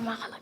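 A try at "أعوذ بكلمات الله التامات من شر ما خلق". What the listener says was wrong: اب بہت اسپیڈ میں پڑھ رہے ہیں, ذرا آرام آرام سے.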